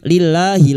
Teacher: lam jalalah yang didohli kasrah dibaca tarkik